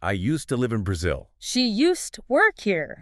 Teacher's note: So we blend them. The D and the T sound, they just merge into one sound.